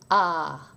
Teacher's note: The French A is more open than the English A of sat. It's more like an AH sound. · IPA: /a/